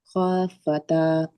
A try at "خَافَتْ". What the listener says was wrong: খতে টান হবে খফাতে